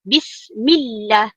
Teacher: perkataan Allah itu ada nabrah lagi dekat situ, ada penekanan. Bila ada penekanan bismillah, millah.